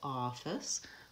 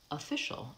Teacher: We have the vowel a for the OF, and that's the stressed syllable, office, versus official. It becomes the vowel schwa.